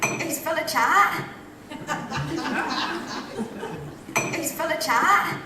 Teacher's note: So she's got that long trap vowel